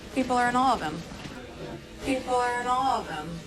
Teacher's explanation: Finally, the H sound in him is dropped as it gets linked to of him. Note that the main stress falls on the word awe.